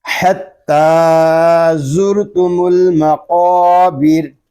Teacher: وصل میں را پر ہے اور وقف میں یہ را باریک ہوگا کیونکہ را ساکن سے پہلے پھر زیر آ گیا ہے